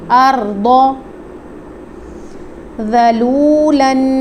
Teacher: واو ساکن سے پہلے پیش ہے تو واو مدہ ہو رہا ہے، اس کی مقدار کو پورا پڑھیں گے، جبکہ ذال کو نرمی سے پڑھیں گے۔